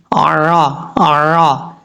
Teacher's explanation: عین کو حمزہ کی آواز میں نہیں پڑھنا، عین کے مخرج سے ہی ادا کرنا ہے ، عرا عرا، اس طریقے سے گلے کے درمیان سے عین